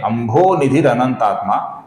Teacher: अंभो निधि का जो विसर्ग है, इसके आगे अनंत आत्मा का अ आया हुआ है, इस कारण से विसर्ग का बन जाता है अपूर्ण र, जो कि आगे वाले अनंत आत्मा के अ में मिला हुआ है। इस कारण से यहां पर आपको र ये पूरा अक्षर बीच में दिख रहा है।